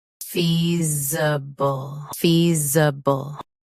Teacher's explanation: Stress fee. Keep z soft, then b quick.